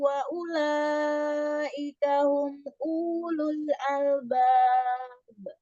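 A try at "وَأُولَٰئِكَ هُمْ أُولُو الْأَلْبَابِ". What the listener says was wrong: Bukan humul.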